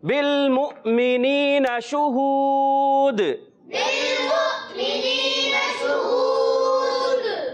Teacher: دال حرف قلقلہ سے ہے, تو کیا ہوگا اس میں؟ قلقلہ ہوگا. ماشاءاللہ آواز لوٹ کر آئے گی.